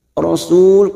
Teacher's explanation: Karena kita wakaf di sini maka hukumnya mat arid li sukun bertemunya mad dengan huruf hidup dan dibaca wakaf. Mat arid li sukun kita samakan 4 harokat kita panjangkan